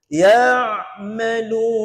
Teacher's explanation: Ain tu yang kita baca pertengahan kerongkong.